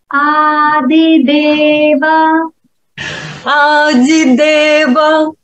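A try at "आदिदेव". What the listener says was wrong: Ты смягчаешь, как в Рязанской области. Что за ди? Дорога. Не Дима, а дорога. Да, лучше говорить ды. Ады.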